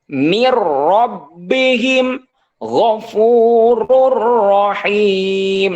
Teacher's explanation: nunnya hilang karena sudah dimasukkan ataupun dilebur dilebur dimasukkan ke huruf ro